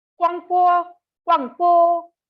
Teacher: a third tone changes into half third tone. That is a tone that only falls and does not rise when followed by a first tone.